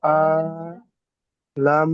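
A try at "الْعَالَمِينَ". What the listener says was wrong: আলা। আইন টান দেবেন, লাম টান হবে না। আলা।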